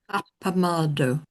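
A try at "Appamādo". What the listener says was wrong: Try to make the final O a bit less English. Appamado, the O.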